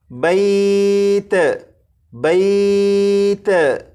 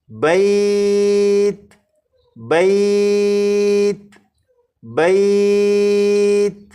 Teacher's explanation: جب آپ تا کو پڑھیں تو تا پر قلقلہ نہ ہو، یعنی اس طرح سے نہ پڑھا جائے بیت بیت، اس طرح سے نہ پڑھا جائے، بلکہ تا پر جب آپ پہنچیں تو آواز ختم ہو جائے، جیسے بیت بیت بیت، 4 مرتبہ۔